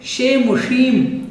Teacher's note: मूर्धन्य शकार में क्या होता है, इसमें हमारी जीभ ऊपर जाकर के उल्टी हो जाती है। मतलब यहाँ से तो हमारी जीभ सीधी जाएगी, वहाँ जाकर के थोड़ी मुड़ जाएगी।